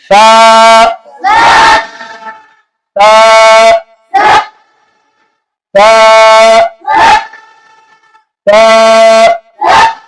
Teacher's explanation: سا کو پڑھتے ہوئے زبان کو باہر نکالنا ہے اور سامنے کے دانتوں کے ساتھ ٹچ کرنا ہے. سا سا سا سا.